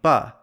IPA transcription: b